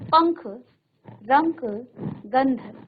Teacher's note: इनका उच्चारण करते समय वायु केवल आपके नाक से बाहर आएगी, आपके मुख से नहीं। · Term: अनुस्वार